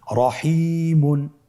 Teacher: র হরফটির উপরে যদি কি হয়, কি আসে, জবর অথবা পেশ, তাহলে র হরফটিকে মোটা করে পড়তে হয়।